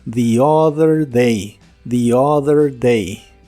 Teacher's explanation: En esta expresión es común pronunciar la primera palabra como the, porque le sigue la palabra other, que inicia con vocal, y la th de other es la D vibrante